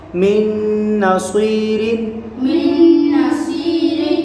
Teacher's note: میم نون نون زیر من میم نون نون زیر نون زبرنا نون زبرنا منا منا صاد یا زیر صی صاد یا زیر سی من نصی من نسی را دو زیر رن را دو زیر من نصیر من نصیر۔ نون ساکن کے بعد حروف یرملون میں سے یہاں نون آ رہا ہے تو یہاں ادغام ہوگا، یعنی گننا کر کے پڑھیں گے۔